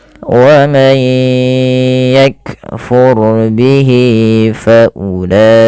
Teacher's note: Wa may yakfur bihi ya, lagi wa man yakfur bihi fa ulaik. Kemudian ro-nya tebal karena di sini ro sukun didahului dengan fathah